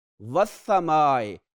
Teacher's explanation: वस्समाए, लाम नहीं पढ़ा जा रहा तो हुरूफ शमसी में से होगा